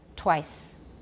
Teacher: I've already rounded it before I've even made the T. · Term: anticipatory assimilation